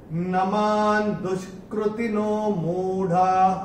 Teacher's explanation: चरण की समाप्ति पे विसर्ग आएगा तो उसका उच्चारण केवल और केवल ह ही होगा। नमान दुष्कृतिनो मूढ़ाः, ये ऐसे करके आएगा।